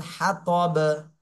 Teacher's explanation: সাকিন দিয়ে পড়তে হবে আর সাকিন দিলে বা কলকলা হয়ে যাবে